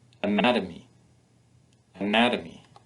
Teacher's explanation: you can hear that the stress is on the second syllable the other syllables are spoken more quietly